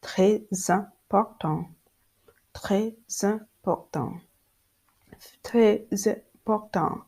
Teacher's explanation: There is a linking between the final consonant S and the beginning of this vowel E, and the linking give the word a smooth and easy, a little bit of like sexy sounds. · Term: liaison